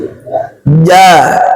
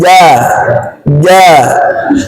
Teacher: Syiddah dia ja bukan ja apalagi bertambah hames. Ja enggak boleh ada udara ee berhembus. Ja bersih. Ja ja. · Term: huruf jim